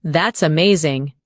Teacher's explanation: When you show understanding with I see, your tone drops slightly to show calmness. When you say that's amazing, your tone rises with excitement. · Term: Intonation